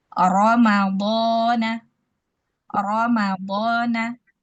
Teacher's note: Apabila ro tersebut berharakat fathah, maka dia kita baca dengan tafkhim ya atau tebal.